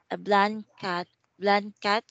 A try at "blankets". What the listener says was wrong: Nice try, but you should say blankets. Blankets. You should put an S. Blankets.